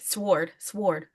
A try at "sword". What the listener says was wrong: It's word with an S. Word with an S. I don't say ord. I say word.